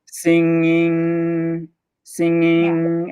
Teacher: saying if this is the top of your mouth is it's the back of your tongue kind of bunches up into the back of your throat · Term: ng sound